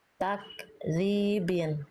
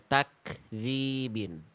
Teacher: Kaf itu ketika sukun dipercikkan nafasnya. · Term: kaf sukun